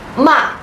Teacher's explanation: It's like when someone hits you suddenly, you say ah. And this is the falling tone. This is the fourth tone.